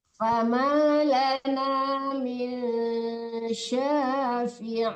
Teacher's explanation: jangan ditekankan nun tapi disamarkan ke syin